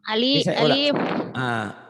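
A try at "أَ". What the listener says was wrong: Bukan, ini udah berbaris. A. Coba dengan A. Yang ini A. Ini A.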